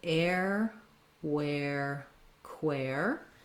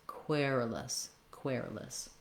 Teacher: We have first syllable stress, and even though this looks like the same spelling as query or question, you can hear those vowels are all different. In querulous, it's the air diphthong.